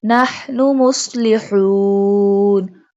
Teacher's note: Ha pronounced from the middle part of throat.